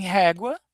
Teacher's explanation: O E com agudo, em português tem um som aberto